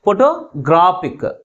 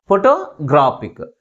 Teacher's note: That is, third syllable is pronounced with a greater force comparing with other syllables. Okay, ఇక్కడ ఐసి అనే suffix add అయ్యేటప్పటికి స్ట్రెస్ అనేది second syllable నుంచి third సిలబల్కి షిఫ్ట్ అయింది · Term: స్ట్రెస్ షిఫ్ట్